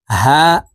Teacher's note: হা হরফ হলুকের মধ্যখান থেকে উচ্চারণ করতে হবে